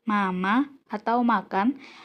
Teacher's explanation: udara keluar melalui rongga hidung karena velum langit-langit lunak diturunkan dan rongga mulut ditutup oleh artikulator, seperti bibir atau lidah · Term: konsonan nasal